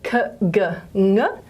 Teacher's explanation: they all involve the back of the tongue up against the soft palate, okay, in this soft palate region.